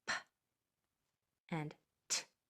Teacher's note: there's no o at the end is just air